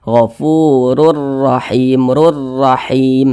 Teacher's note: kedua huruf ro ini dibaca tebal dibaca takhimah maka pangkal lidah kita itu naik ke atas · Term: tafkhim